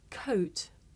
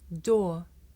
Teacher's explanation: difficult to tell the difference between the diphthong o and the long vowel or